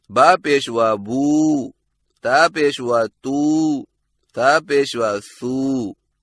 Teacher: number 3, वाव जज़म वाली, जिससे पहले हरफ पर पेश हो, और इसकी अदायगी का तरीका ये है कि होंठों को गोल ना तमाम मिलाकर थोड़ा सा खींचकर पढ़ा जाता है